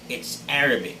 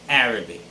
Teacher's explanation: It's not Arabic, just as most of us would say it, but it's Arabic. The stress should be on the first syllable.